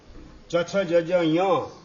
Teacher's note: તાળવામાંથી ઉત્પન્ન થાય એટલે તાલવ્ય કહેવાય